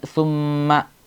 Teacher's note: ശദ്ദുള്ള മീം ആണ് അതുകൊണ്ടുതന്നെ അവിടെ നന്നായിട്ട് മണിക്കേണ്ട സ്ഥലമാണ്